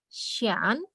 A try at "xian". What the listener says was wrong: Maaf, ini kalau Ian itu kalau di Mandarin lebih ke Yen. Nah, berarti yang ini Cien.